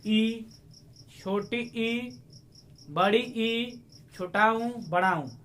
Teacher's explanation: जिन स्वरों के उच्चारण में मुख द्वारा लगभग बंद हो जाता है तो उसे हम संवृत्त कहते हैं। जैसे ई, छोटी ई, बड़ी ई, छोटा ऊ, बड़ा ऊ, ये मुख का जो है पूरा बंद हो जाता है, लगभग बंद ही हो जाता है।